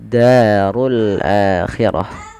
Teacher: fathah bertemu dengan alif dua harakat panjang lafal da runnya tebal sebagaimana akhir nanti ya kedua-duanya tebal ro · sini langsung kita hukumi dengan alif lam syamsiah yang di mana Alif lamnya diamkan dimasukkan ke huruf Dal langsung ditekan di dalnya · Da ada mad tabi'i lagi, fathah bertemu dengan alif, 2 harakat panjang lafal da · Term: Mad thabii'i